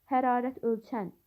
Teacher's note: Hərarət ölçən sözünə vurğu sondadır.